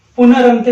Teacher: पदांत र के पश्चात र आने पर पूर्ववर्ती र का लोप हो जाता है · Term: रोरी संधि